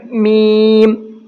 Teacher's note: میم دونوں ہونٹوں کی خشکی کے حصے سے ادا ہوتا ہے۔ یعنی جب میم بولیں گے تو ہمارا جو باہر کا ہونٹوں کا حصہ ہے، اوپر والے اور نیچے والے، ان کو ٹچ کرنا ہے